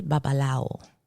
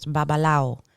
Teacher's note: most people will say babalao like the w kind of disappears